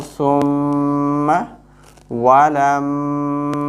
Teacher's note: Lam mim fatha, lam, mim alif fatha, ma, walamma. We will do ghunna there whenever mim comes with shadda.